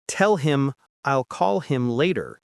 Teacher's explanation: Or the sentence, tell him I'll call him later, becomes tell him I'll call him later. The H in him drops out completely.